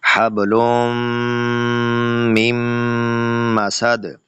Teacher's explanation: حبل من مسد، میم کے اوپر غنہ ہو گیا اور دال کے اوپر آواز کا ہلنا اسے قلقلہ کہتے ہیں